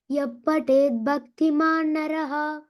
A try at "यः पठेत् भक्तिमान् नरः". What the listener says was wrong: After ya and before pa, you should say give the F sound.